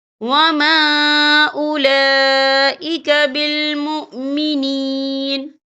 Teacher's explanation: اور آگے دیکھیں اولا، یہاں لام کے اوپر کھڑی حرکات ہے اور اس پر مد بھی ہے، یہ مد جو ہے مد متصل ہے، اس کی مقدار 4 حرکت کے برابر ہے، تو ہم اسے 4 حرکت کے برابر کھینچ کے پڑھیں گے